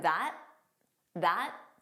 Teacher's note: So you just don't press out that final T.